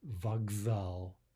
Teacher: we're voicing the K to a G